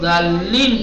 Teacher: ہے نا. ہاں یہ ظالین میں جو یا پر کھینچتے ہیں وہ یا کیا ہے، مد عارض ہے، ظالینہ ہے، لیکن جب رکتے ہیں تو ظالین پڑھتے ہیں.